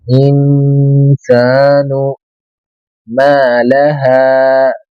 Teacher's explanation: یہاں پہ نون ساکن کے بعد حروف اخفا کے 15 حرفوں میں سے سین آ رہا ہے، اس لیے یہاں پہ نون کو چھپائیں، ناک سے ہلکی آواز نکالے، نون کو جس طریقے سے سلا دو، اس طریقے سے.